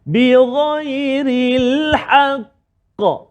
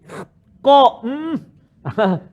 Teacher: Qalqalah kubra yang paling tinggi lantunan dia kerana ada sabdu dan kita waqaf kat dia.